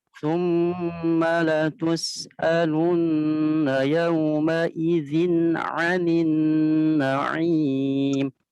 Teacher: langsung masuk ke ain. Harusnya hamzah dulu baru ain ya.